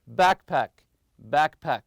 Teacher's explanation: you put the stress on the first part also backpack backpack always stress the first part